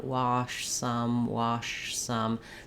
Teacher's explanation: the tongue moves from the shh the back position a little bit forward to this position wash some you can even do what i